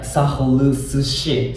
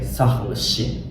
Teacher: But since the postposition here is she, su actually drops out. So Georgian people say sahurushi.